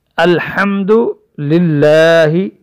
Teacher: ہا کی ادائیگی بھی حلق سے ادا ہوتی ہے، حلق کے بیچ میں سے جہاں سے عین ادا ہوتی ہے وہیں سے ہی ہا ادا ہوتی ہے۔ · اس کو ہم باریک پڑھیں گے دونوں لاموں کو